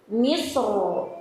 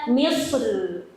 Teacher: di kata misro dan al-qitri ini bisa dibaca dengan tebal atau tipis ketika waqaf atau berhenti